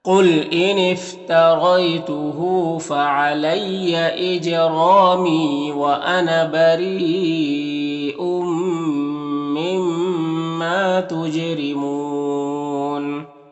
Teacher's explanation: یہاں پر میم مشدد ہے تو یہاں پر غنہ ہوگا، اور الف مدہ ہے، 1 الف کے برابر کھینچیں گے۔ جیم میں قلقلہ ہوگا، را کے نیچے زیر، را کو باریک پڑھیں گے، اور یہاں پر وقف کریں گے تو مد عارض وقفی ہوگا، تو اس طرح سے پڑھیں گے۔